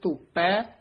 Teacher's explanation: ਧੋਪੈ ਭੈ ਨਹੀਂ ਬੋਲਣਾ ਧੋਪੈ ਪਪੇ ਨਾਲ ਉਚਾਰਨ ਕਰਨਾ